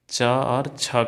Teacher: तालु से च और छ का उच्चारण निकलता है हमारा